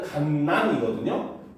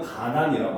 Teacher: 같은 자음이 연달아 발음될 때 하나가 발음이 되지 않는 경우가 있다는 거예요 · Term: 동음 탈락